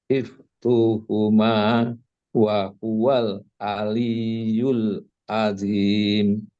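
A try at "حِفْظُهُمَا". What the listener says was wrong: Pada saat zuhuma itu zo. Bentuk zo itu antara zai dengan do dengan zo jadinya. Hifzuhuma, hifzu, zo. Tidak do tapi ke zo. Hifzuhuma, zo.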